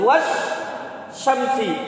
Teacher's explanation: Idgham bacanya, hukumnya adalah idgham. Jadi alnya tersebut seolah-olah tidak ada karena dimasukkan ke dalam huruf yang sesudah